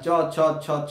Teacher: চ ছ, দেখো জীব যেন ঘষলো, ধ্বনিবাহী বাতাস যেন একটু ঘষা খেয়ে বেরিয়ে এলো। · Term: ঘৃষ্ট ধ্বনি